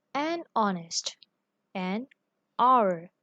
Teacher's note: So consider an honest, an hour. So here H is written in the beginning, but it is pronounced silently.